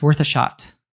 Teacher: So this is a good one because we have the article a there, which we almost never say a fully pronounced a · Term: schwa sound